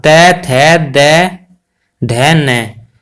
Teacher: त वर्ग का स्थान दंत में होता है